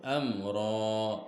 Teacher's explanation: Nah, ini ada mim sukun bertemu huruf ro. Ketika dibaca, huruf mim tidak boleh didengung. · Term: izhar syafawi